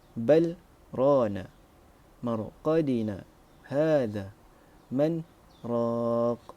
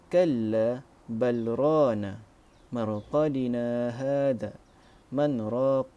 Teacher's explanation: Tariq Asy-Syatibi membaca dengan saktah 2 harakat